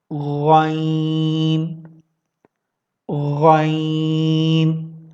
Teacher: غین کو ادا کرنے کے لیے آپ اپنے گلے کا اوپری حصہ ٹاپ آف دا پورشن کو یوز کریں گے اور آپ اس حرف کو ادا کریں گے غین۔